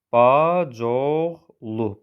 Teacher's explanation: Bacıoğlu bir sözün sonu I saiti, digər sözün başlanğıcı O saiti ilə başladığı zaman bu tip mürəkkəb sözlərdə saitlərdən biri düşür, olur bacoğlu. Burada I saiti düşür və bacoğlu kimi tələffüz olunur. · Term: səs düşümü